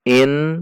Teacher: Nun tasydid dibaca ghunnah dengung dua ketuk